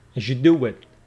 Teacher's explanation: whenever we got Z and Y sound they assimilate together